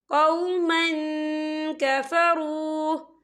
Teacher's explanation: تنوین کے بعد جو ہے کاف آ رہا ہے، اور کاف جو ہے اکفا کا ورڈ ہے، تو ہم یہاں اکفا کریں گے، تنوین کی آواز کو ناک میں چھپائیں گے